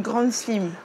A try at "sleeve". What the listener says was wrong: J'adore comment tu prononces parce que du coup au lieu de dire sleeve, elle dit slim.